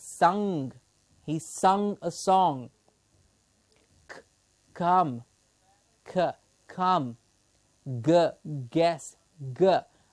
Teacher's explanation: the back of the tongue and the soft palate is the passive articulator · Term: velar consonants